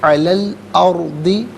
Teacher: انا جعلنا ما علی، لام پر کھڑا زبر ہوگا، لیکن جب ملا کر پڑھیں گے تو لام پر زبر ہوگا، اسے الارض کی لام ساکن کے ساتھ ملا کر پڑھا جائے گا۔ درمیان میں سے الف یعنی حمزہ کو حذف کریں گے